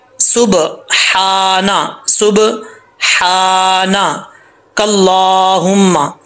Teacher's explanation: इस हा का ताल्लुक हल्क से है, सीने से नहीं है।